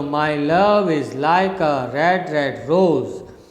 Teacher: unstressed stressed unstressed stressed unstressed stressed unstressed stressed this is how the rhythm of that poem of that line goes so you can say it's a rising rhythm from down you